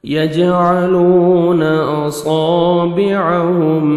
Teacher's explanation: یج جیم حروف قلقلہ میں سے ڈبل ساؤنڈ آئے گا